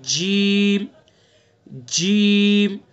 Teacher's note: तो सा का मखरज जबान की नोक और सना उलिया का किनारा। जीम, जीम का मखरज जबान का बीच और उसके मुकाबिल ऊपर का तालु। जबान का बीच, बीच वाला हिस्सा जबान का, इस जबान के बीच वाले हिस्से को बिल्कुल उसके ऊपर लगाएंगे, तालु के ऊपर, तो वहां से अदा करेंगे जीम, जीम, ठीक है।